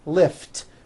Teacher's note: lift ends with an unvoiced t